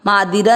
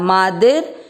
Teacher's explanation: दी के बाद में वो आधा र पड़े जाएगा। मादिर र आधा ही है ना, मादिरा नहीं करना, मादिर। एंड देन ही की मात्रा छोटी, मादिर ही।